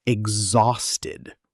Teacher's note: Exhausted, with a Z sound in the middle, not an S sound.